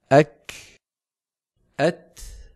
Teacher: الشدة والهمس في الكاف والتاء صفتان على الترتيب، فهذان الحرفان شديدان في أولهما مهموسان في آخرهما